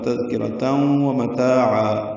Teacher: واو ہونٹوں کی نا تمام گلائی سے اس میں ادغام ناقص غنہ ہوگا